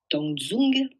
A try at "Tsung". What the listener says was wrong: Ah ouais, t'as du mal avec Zung, parce que c'est Tsung.